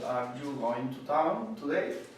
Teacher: Las preguntas en inglés americano, una clase de pregunta tiene entonación que sube